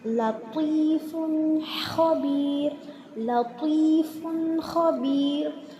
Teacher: தன்வீனுக்கு அப்புறம் ஹா இருக்குது. ஸோ தன்வீனை தெளிவாக ஓதணும்.